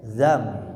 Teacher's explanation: Ini menunjukkan nun tidak dibaca jelas zan tapi diubah ke huruf mim. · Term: Iqlab